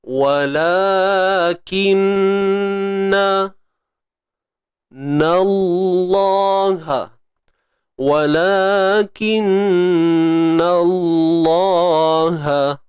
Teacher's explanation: Lam pada kalimah Allah ni perlu dibaca tebal. Tetapi pada nun itu kita kekalkan barisnya. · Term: taghliz